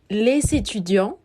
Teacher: en el caso de les étudiants estamos haciendo una unión obligatoria, porque tenemos el artículo y el sustantivo. Sin embargo, al ser un sustantivo en plural, estaremos omitiendo al final la S y decimos les étudiants.